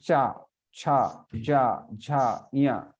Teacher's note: pronounced with the middle of the tongue against the palate. That means tongue has to touch the palate.